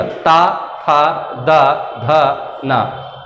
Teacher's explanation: दंत का मतलब होता है जिन वर्णों को बोलते वक्त हमारी जीवा जो है सीधे दांत पे लगे